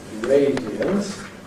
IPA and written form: ˈreɪdiənt (radiant)